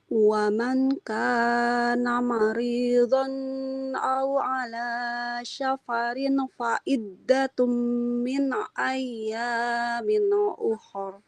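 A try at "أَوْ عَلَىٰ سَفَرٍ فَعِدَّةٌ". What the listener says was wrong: Jangan syafarin. Huruf sin biasa. Safarin fa'iddatum. Ya, untuk baca Al-Qur'annya sudah cukup bagus, tapi memang ini tadi panjang pendeknya harus lebih diperhatikan ya nih.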